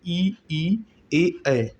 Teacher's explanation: जिह्वा के प्रयोग के आधार पर अग्रस्वर होता है ई ए ऐ